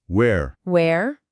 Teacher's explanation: tem aquele som mais aberto, que enche a boca. O ar sai fluindo livremente.